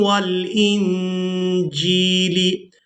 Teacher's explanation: یہاں نون ساکن پر اخفا کریں گے، یعنی نون کی آواز کو ناک میں چھپا کر ادا کریں گے۔